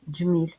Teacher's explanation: наступний звук м пом'якшений тому що далі іде буква і